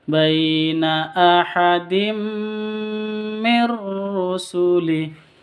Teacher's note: Baina sifat Lin lentur Baina ahadim Mir rusulih tanwin ahadin Min tanwin bertemu dengan mim masuk ke mimnya terus ditambah dengan dengung karena idgham bighhunah ahadim seperti itu ahadim langsung mingkem ke mim langsung masuk ke